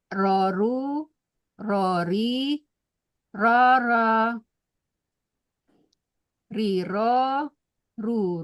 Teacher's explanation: Huruf lidahnya ini bergetar ya. Bergetaran itulah yang menimbulkan mengeluarkan suara ro ya. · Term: huruf ro